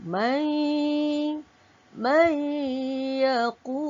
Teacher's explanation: hukumnya idgham bi gunnah. Dibaca dengan dengung sebanyak 2 harakat.